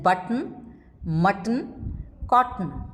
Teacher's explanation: Nasally released when it is followed by n, as in button, mutton, cotton.